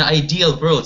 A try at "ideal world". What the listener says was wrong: You're putting a V with your W there.